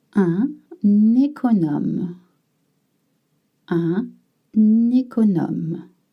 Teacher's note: You've noticed how I link un, which means an, and économe. Just like in English, when you have a noun or a word that starts with vowel and you have un before, you link it.